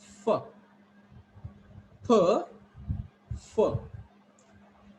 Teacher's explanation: your lower lip touches to upper teeth and then air released